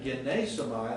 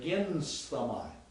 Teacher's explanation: you actually added a vowel to smoothen out the sound.